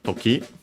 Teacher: accent on the last syllable